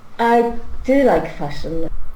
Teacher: Let's stress on do.